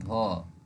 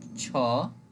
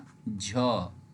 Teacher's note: महाप्राण में जब हम इनका उच्चारण करते हैं तो बहुत अधिक मात्रा में हमारे मुंह से वायु बाहर निकलती है